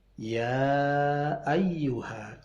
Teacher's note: ya mad tabi'i ketemu hamzah di luar kalimat menjadi mad jaiz, panjangnya 6 ketuk